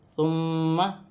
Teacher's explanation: ثا نرمی والا حرف ہے، سیٹی نہ ہو، نرمی سے ادا کیا جائے